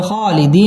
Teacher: মধ্যে তাবাই এক আলিফ টেনে পড়তে হবে